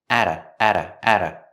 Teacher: home I got home at about the T and at is a fast D because it's between vowels